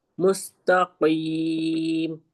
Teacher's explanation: قاف جو ہے حروف مستعلیہ ہے تو ہم اس کو موٹا پڑھیں گے